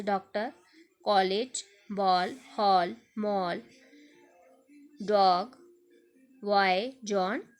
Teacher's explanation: इसका उच्चारण आ तथा ओ के बीच का होता है। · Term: आगत स्वर